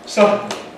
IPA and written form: ˈsʌdn̩ (sudden)